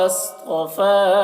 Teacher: صاد کو پر پڑھیں گے، صاد حرف مستعلیہ میں سے ہے